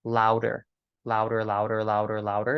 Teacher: your tongue lightly flaps against the roof of your mouth, and you get that nice ra ra ra ra ra ra ra ra ra sound. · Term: Gujarati ra